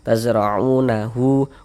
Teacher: hu dibaca panjang. Ini namanya adalah mad silah thawilah atau mad silah kubra. Karena huruf ha ini huruf ha damir.